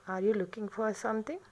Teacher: the pitch of the voice rises constantly from A fairly లో pitch to high pitch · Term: రైజింగ్ ఇంటోనేషన్